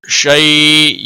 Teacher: یا لین ہے تھوڑا نرمی کے ساتھ کھینچ کر ادا کریں گے